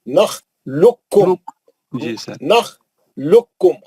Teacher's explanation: اس میں وہ ادغام متقارباً ہے، خاف اور کاف کا، دونوں مخرج قریب ہے، خاف ساکن ہے اور کاف جو ہے مشدد ہے۔ کاف لام کے پیش سے سیدھا کاف میں چلے جانا، خوف نہیں پڑھنا کیونکہ وہ ادغام ہو گیا اس کا۔ · کاف لام کے پیش سے سیدھا کاف میں چلے جانا، خوف نہیں پڑھنا کیونکہ وہ ادغام ہو گیا اس کا۔ نخلقکم، نخلقکم، خاف جو ہے وہ ہو جاتا ہے، گر جاتا ہے، ڈراپ ہو جاتا ہے۔ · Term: ادغام متقاربین